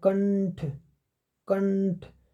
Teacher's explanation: ये जो अनुस्वार है इसका उपयोग न के रूप में उच्चारित होता है।